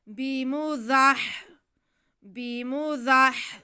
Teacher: वामा हुआ, वामा हुआ बिमुज़हज़िहिही, बा के नीचे ज़ेर, मीम पे ज़बर और ज़ा पे भी ज़बर। ज़ा को हम सीटी की आवाज़ के साथ पढ़ेंगे और आगे हा के साथ मिलाएंगे क्योंकि हा साकिन है।